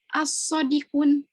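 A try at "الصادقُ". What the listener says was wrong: Kalau ada alif lam apa? Kalau ada alif lam tidak boleh tanwin. As-sodiqu.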